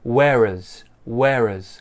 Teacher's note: one so where has she gone once again get rid of that h join the r with the uh and we get an uz sound raz where is where has